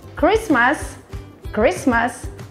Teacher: não pronunciamos a letra T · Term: silent letter